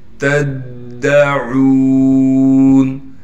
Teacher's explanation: تا کو دال سے ملائیں گے، اس لیے کہ دال پر تشدید ہے اور تشدید ہونے کی وجہ سے تھوڑا ٹھہراؤ رکھیں گے۔ عین کے بعد واو مدہ ہونے کی وجہ سے عین کو ایک الف کی مقدار کھینچیں گے۔